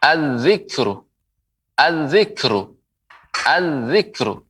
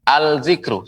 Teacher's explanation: Alif lam dilebur dengan melebur ke huruf zal. Ya, tidak pengucapannya dengan al-zikru, salah.